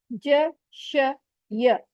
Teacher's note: जबान के बीच से हैं ज श य